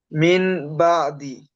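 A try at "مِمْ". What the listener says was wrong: দেখেন এই পোয়াটি যে হবে, মিন আর হবে না, কি হবে, মিম হবে, কি হবে, মিম। নুনটা বাদ দিয়ে মিম পড়তে হবে, মিম, মিম জের মিম বাদি। হ্যাঁ, এই মিমকে পড়তে হবে।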